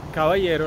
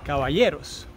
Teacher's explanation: los cubanos no pronunciamos a veces las eses al final de las palabras. Nos comemos las eses, como decimos en cubano.